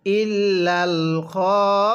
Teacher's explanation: খ এর মধ্যে কিন্তু চার আলিফ টানতে হবে খ এর পরে একটি আলিফ আছে এই আলিফের উপরে দেখুন মোটা